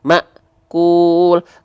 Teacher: karena hamzah punya sifat syiddah, ketika hamzah dalam kondisi sukun akan sangat terasa sifat syiddahnya. Tertahan suaranya, akhirnya membuat suaranya terhentak. · dibaca dengan cara diputus suaranya Nah kalau ini memang harus putus suaranya harus terputus suaranya ah ya atau seperti terhentak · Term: huruf hamzah